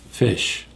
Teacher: Short I. Short, low. Break it off. Don't extend it. Fish. Air is coming out.